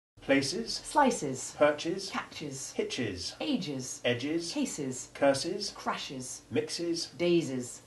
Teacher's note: the e s ending is added with sounded short e3 and a hard s